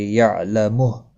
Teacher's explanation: عین ساکن کو ہلانا نہیں، اور ہا ساکن پڑھا جائے گا وقف کی صورت میں